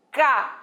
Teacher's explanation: O ne, professor, é a sílaba tônica.